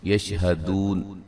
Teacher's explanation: جب وقف کریں گے بڑی مد کے ساتھ پڑھ سکتے ہیں